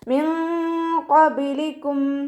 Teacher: നൂൻ സാക്കിനയെ മറച്ചു വെച്ച് മണിച്ചോതി കൊടുക്കുക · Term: ഇഖ്ഫാ